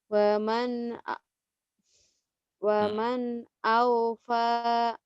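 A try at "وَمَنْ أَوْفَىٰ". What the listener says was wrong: Ya, betul.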